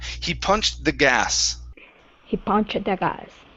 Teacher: connect that ed ending, the T sound, with the word the